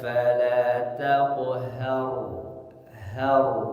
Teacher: cara membaca huruf ra sukun, ini sebelumnya fathah, maka tebalkan cara membacanya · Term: tafkhim